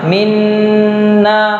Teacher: kalau idgham nun mati ketemu dengan nun misalnya minna itu dibaca jelas dengunnya